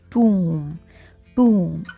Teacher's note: Letter O has long oo sound, that is tomb, tomb, and letter B is silent.